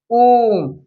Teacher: जैसे ओम जैसे ओम इसमें बहुत जो है खिंचाव आ रहा है। इसमें जो है ह्रस्व स्वर की अपेक्षा इसके तीन गुना समय लगता है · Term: प्लुत स्वर